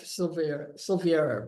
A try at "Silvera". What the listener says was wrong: Yeah, it looks like Silveria, but they don't pronounce the I, so it's Silvera.